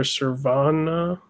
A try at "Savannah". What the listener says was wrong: Savannah. There's no R. It's just Savannah.